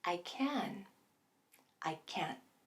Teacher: and can't are getting the stress right and that means that the vowel in both words is getting its full pronunciation so you're hearing that clear ah